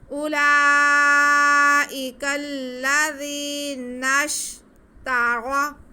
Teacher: را پہ زبر ہے ہمارے پاس، تو را کو ہم موٹا کر کے پڑھیں گے، اور واو کے پیش کو آگے ضاد کے ساتھ ملائیں گے، کیونکہ ضاد ہمارے پاس جو ہے مشدد ہے، تو واو کے پیش کو ہم ضاد کے ساتھ ملا دیں گے۔